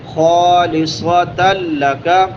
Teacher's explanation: صاد حروف مستعالیہ میں سے موٹا پڑھیں گے اس کو، اور سیٹی والے حروف میں سے بھی ہے.